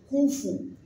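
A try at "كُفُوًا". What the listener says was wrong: Wan, tel que Wan en anglais, Wan. Il ne faut pas faire kufu, Wan, non. Kufu, Wan,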